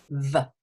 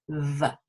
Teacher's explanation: I always think of the v as being a tooth, okay, a sort of fang that comes down and bites the inside of the bottom lip. V. You can keep the top lip still and just say v.